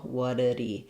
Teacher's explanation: it just sounds like whatted, with a flap in the middle